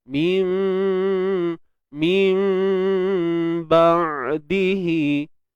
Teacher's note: Tukarkan sebutan nun tu kepada mim. Kemudian kaedahnya tutup bibir bersahaja. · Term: Iqlab